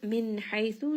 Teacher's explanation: nun sakin here is going to have idhar. It is pronounced clearly. It also has tawassut because the letter after is ha, which is one of the throat letters.